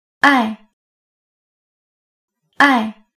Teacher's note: the fourth tone starts very high and drops very low